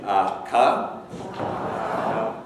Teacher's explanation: If you say ka, then the ka is made with the back of your tongue against the soft palate, the velum, at the back of the mouth